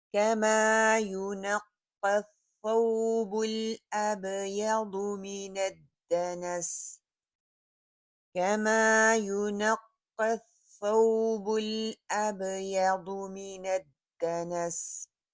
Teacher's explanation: دال کے اوپر پہلے کلکلا کریں گے پھر زبر کے ساتھ پڑھیں گے، تھوڑا سا اس کو پکڑ کے رکھیں گے